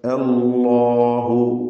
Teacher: വീണ്ടും ഇസ്മുൽ ജലാല ലാമിനെ തഫ്ഹീം ചെയ്ത് തടിപ്പിക്കുക. അല്ലാഹു, ലാമിന്റെ മഖ്റജിൽ മാറ്റം വരാതെ ശ്രദ്ധിക്കുക.